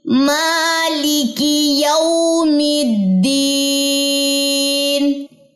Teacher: کاف کی زیر کو لمبا نہیں کرنا